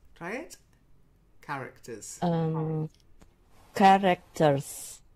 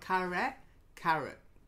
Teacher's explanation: So you've got two schwas, characters.